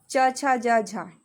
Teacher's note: जिन व्यंजनों के उच्चारण में स्पर्श का समय अपेक्षाकृत अधिक होता है और उच्चारण के बाद वाला भाग संघर्षी हो जाता है, वे स्पर्श संघर्षी कहलाते हैं। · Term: स्पर्श संघर्षी व्यंजन